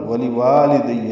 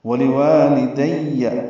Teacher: واو لام جلدی پڑھنے ہیں، دوسرا واو الف مدہ ہے وا، ولی والدیہ توجہ سے سن لیجیے اور صحیح کر لیجیے جس کا غلط ہو۔